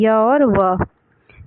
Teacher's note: जब हम उच्चारण करते हैं तो उच्चारण अवयव पहले क्रमशः इ और उ की स्थिति में होता है और बाद में व्यंजन की स्थिति में। इसीलिए य और व को अर्ध स्वर कहते हैं।